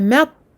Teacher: je bloque ici au niveau du ta, je ne fais pas de qalqala non plus.